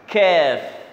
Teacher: Kaf ni kena sebut angin kena keluar tau sebab dia hamas